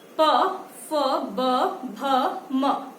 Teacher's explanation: आपके लिप्स जो है वो एक दूसरे से मिलेंगे, होठ आपके एक दूसरे से मिलेंगे। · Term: ओष्ठ